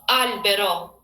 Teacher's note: don't change the O. Don't say like O, like in English would be O. Just like plain O.